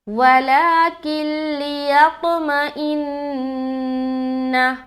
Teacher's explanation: نون کے اوپر کیا ہے؟ شد ہے، تو یہاں پر ہم کیا کریں گے؟ نون مشدد کا غنہ کریں گے۔